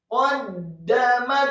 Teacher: Kemudian qaddamat, qafnya dibaca tafkhim atau tebal, fathah 1 harokat, kemudian dalnya ditasydidkan. Membaca huruf qaf dengan posisi mulut bibir bawah agak tertutup, kemudian dal yang tasydid dengan posisi mulut terbuka, tersenyum karena tarqiq. Qaddamat, setelah dal yang tasydid dan fathah 1 harokat, kemudian mimnya dibaca fathah 1 harokat tipis, kemudian huruf ta yang sukun atau mati dibaca hamas atau tak hamas, ada etsnya.